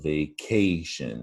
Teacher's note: that's the stressed syllable right in the middle